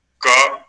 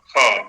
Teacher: तो क ग ङ, इनमें अल्प प्राण, ख घ इनमें महाप्राण।